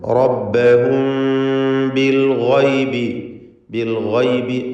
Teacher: സാക്കിനത്തായ മീമിന് ശേഷം ബാ വന്നതുകൊണ്ട് ഇഖ്ഫ ഷഫവി നൽകി മണിച്ചുകൊണ്ട് ഉച്ചരിക്കണം.